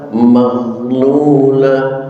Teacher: Mohon dengan hormat jangan sampai dikolkolakan ghinnya sehingga terdengar bacaan maghlulah. Jangan, karena ghin bukanlah huruf qalqalah. Bacalah tanpa pantulan qalqalah